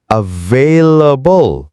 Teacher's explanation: ผมรู้ว่าavailableต้องมีจังหวะเบาหนักเบาๆ